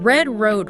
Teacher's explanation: >> In English, particularly American English, the R is usually produced deep in the mouth. Your tongue pulls back, kind of bunches up, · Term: R sound